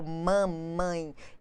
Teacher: ou então a questão do mamãe, o M inicial, que é bilabial